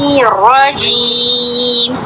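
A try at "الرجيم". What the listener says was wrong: را پہ تشدید واضح نہیں کرنی، راجیم، واجیم، منہ بھر کے تشدید واضح کیجیے۔ واجیم جماؤ کے ساتھ۔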